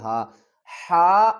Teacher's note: دیکھیں اس کو ہم حلق کے نیچے والے حصے سے ادا کریں گے۔